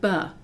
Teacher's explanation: notice that we're adding a short u sound to the b